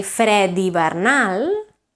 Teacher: if you say fred hivernal, then it becomes a D because it's followed by a vowel